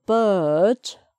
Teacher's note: So no R there. That's a silent one.